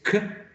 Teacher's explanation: The following is k, which is voiceless, right? Is velar, and it is a plosive sound.